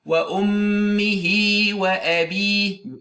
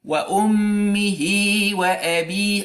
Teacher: I didn't say wa ummihi wa abi. No, I added a little ya after the ha, and this ya is madiyya, is to be lengthened. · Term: linking mad